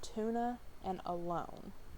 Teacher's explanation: the schwa, which is a mid central unrounded lax vowel